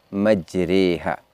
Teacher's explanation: alif mad ini bunyinya imalah, yaitu fathah tapi miring ke kasroh. Bunyinya E.